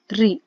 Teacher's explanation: जब री हम बोलते हैं तो आप देखेंगे हमारे मुंह की भीतर की छत का अगला भाग टच हो रहा है हमारी जीभ से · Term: मूर्धन्य